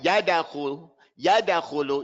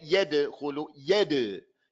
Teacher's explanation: You open your mouth on the ya. But on the dal, you're just going to barely separate the two entities that meet together. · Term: qalqala